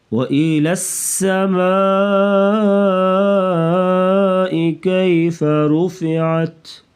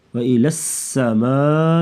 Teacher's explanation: لام کو سین کے ساتھ ملائیں گے تو سیٹی جیسی آواز نکالیں گے